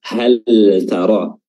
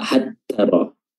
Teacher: lamnya dibaca izhar, dibaca jelas